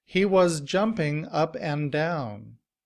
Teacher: in reduced form, and is pronounced un. And combined with up, it sounds like upp'n.